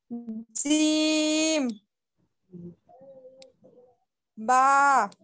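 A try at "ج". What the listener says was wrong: জিম জোড়া না হয় আপা, খুব খেয়াল করতে হবে। জি একেবারে পাতলা।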